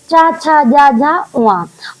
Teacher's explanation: चा वर्ग की चा, छा, जा, झा, उआ। और चा वर्ग तालव्य ध्वनि कहलाता है।